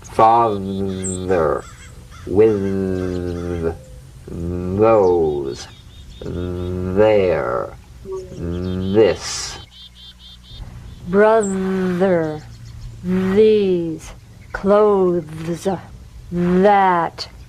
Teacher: Feel that vibration on the tongue outside the teeth. You've got to let the tip of the tongue stick outside the teeth and vibrate. · Although this sound creates difficulty for many people, when executed correctly, the th is very easy. So, slip the rim of the tongue between the teeth and sing feeling a buzz or vibration. Feel that vibration on the tongue outside the teeth.